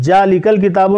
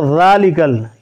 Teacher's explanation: یعنی دانت کا نوک جو سامنے والا اوپر کا دانت ہے اس کے جو نوک ہیں اس سے زبان کی نوک لگ کے ادا ہوگی